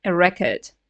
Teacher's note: if that's a noun can we guess yeah the stress is on the first syllable